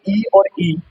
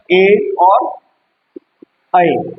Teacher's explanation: जिनको उच्चारण करते समय जीभ का आगे का भाग यूज होता है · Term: अग्र स्वर